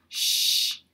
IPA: ʃ